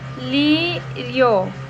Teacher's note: o lírio vai de uma semivogal i pro o. Então é crescente de tongo crescente.